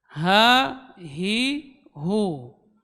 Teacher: huruf H ini keluar dari pangkal tenggorokan